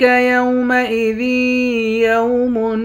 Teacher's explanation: ذال کو یا کے ساتھ ملا کر یہاں ادغام مع الغنہ یعنی غنے کے ساتھ پڑھیں گے